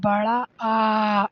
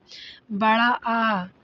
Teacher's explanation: विवृत स्वर, जिन स्वरों के उच्चारण में मुख द्वार पूरा खुला रहता है। विवृत वही, विवृत का मतलब ओपन समझ लीजिए, पूरा खुला।